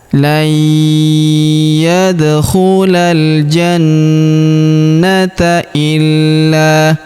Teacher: Huruf na kita tahan dan kita tekan serta kita dengungkan 2 sampai 3 harokat karena terdapat tanda tasydid di atasnya.